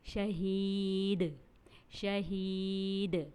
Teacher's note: شہید میں ہم نے یا مد آ رہا ہے، اس لیے ہم نے اس کو ایک الف کے برابر کھینچا، اور دال کو ساکن کرتے ہوئے اس کو ہم نے قلقلہ کیا، کیونکہ آپ کو یاد ہے کہ دال حروف قلقلہ میں سے ہے، اور حروف قلقلہ جب ساکن ہو جاتے ہیں تو ان کی آواز پلٹ کر واپس آتی ہے، یعنی ان پر قلقلہ کیا جاتا ہے۔